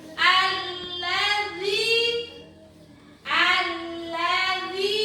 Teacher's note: Alladzi dza yang di ujung lidah. Jangan ja, jangan za tapi dza yang di ujung lidah